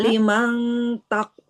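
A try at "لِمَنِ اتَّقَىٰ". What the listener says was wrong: bukan limang. Kan nunnya ada harokatnya. Lima nit tako.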